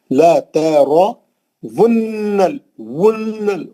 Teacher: واو کے پیش کو گول ہونٹوں سے نون کو ملا کے غنہ کرنا ہے. ونل پھر نون کے زبر سے لام کو ملانا.